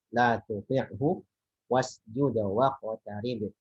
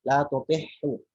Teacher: Jangan sampai ain ini karena berdekatan dengan ha jadi tidak jelas mengarah ke huruf ha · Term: huruf ain